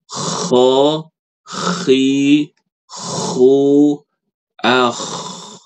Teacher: suara ko itu suaranya kasar kayak gitu. Kayak orang mendengkur, kayak orang ngorok.